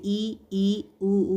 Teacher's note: संवृत जो है मुख का द्वार लगभग बंद रहता है